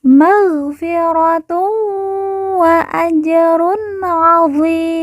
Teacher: Perhatikan, tun bertemu dengan huruf wawu, maka tanwin dilemburkan langsung masuk huruf wawu, kemudian ditekan, ditahan 2 harokat dan didengungkan.